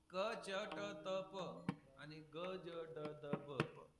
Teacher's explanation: क च ट त प आणि ग ज ड द ब हे अल्पप्राण आहे, कारण त्याच्यात हकार कमी आहे ना. क च ट त हकार नाहीये.